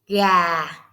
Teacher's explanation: Going down softly? That is Huyền